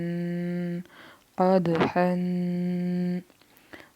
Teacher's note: कद दाल है, कलकला करेंगे कलकला